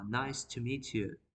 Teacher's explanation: at the beginning our voice in a higher position and when I ended my sentence we can hear the decreasing of our voice